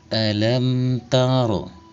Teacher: Lam taro ro dibunyikan secara tafkim atau diibarkan suaranya sebab huruf ro berharakat fathah atau baris di atas pangkal lidah dinaikkan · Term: tafkhim